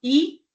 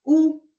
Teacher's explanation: Então, aqui, se nós pegarmos, por exemplo, o I e o U para testarmos, nós vamos ver que no I, se falarmos vários Is ao mesmo tempo, então fica assim, I, a boca não é redonda, ela fica um pouco mais esticada. Então, I, diferente de U. Então, nós fazemos o U, a nossa boca já arredonda um pouco mais, nossos lábios se arredondam.